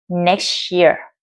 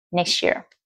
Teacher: các bạn hãy nối âm ở phần này có âm t và âm year có thể nối âm được, là thành next year.